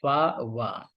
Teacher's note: When the top teeth connect with the bottom lips in sounds like फा, वा। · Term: लेबियो डेंटल्स